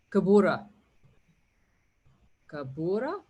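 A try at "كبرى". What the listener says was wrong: You don't have to use a double vowel. If you say kabura, it means you're using a double vowel on the da. Just a simple dhamma.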